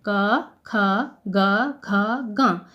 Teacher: इनका सभी का उच्चारण स्थान कंठ है। जिह्वा कंठ के साथ मिलकर इन व्यंजनों का उच्चारण करती है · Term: क वर्ग